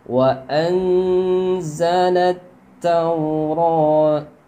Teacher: taknya bertasdid, jadi harus tekan dulu.